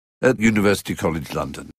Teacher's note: Listen to the word at, which in fact is not at, but ut, with a schwa. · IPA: /ət̚/